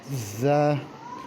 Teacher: ز کو اس طرح سے ادا کرنا ہے کہ زبان کی جو نوک ہے وہ اوپر والے دانتوں کے درمیانی حصے پہ لگے، اور سیٹی کی آواز نکالنی ہے اور اس کو سخت کر کے پڑھنا ہے